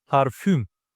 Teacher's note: It's a front vowel and rounded one.